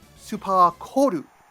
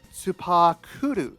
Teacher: But you may recall that the word on the box is supakoru, with an O sound between the K and the L instead of an U sound